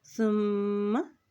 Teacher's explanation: लहुमुल्लाहु मूतू मी पेशवा मू ता पेशवा तू मूतू फ़क़ाल लहुमुल्लाहु मूतू सुम्मा सा की पेश को मीम के साथ मिलाते हुए पढ़ेंगे क्योंकि मीम के ऊपर शद है और जब मीम के ऊपर शद आ जाती है तो वहाँ पर गुन्ना भी अदा किया जाता है